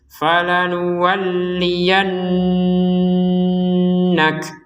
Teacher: huruf nun dan mim bukan hanya ditekan tapi didengungkan. Kalau huruf yang lainnya tekanan saja tanpa ada dengung. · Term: dengungan